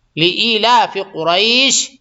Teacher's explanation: یہ بڑا قاف ہے، موٹا کیجئے گا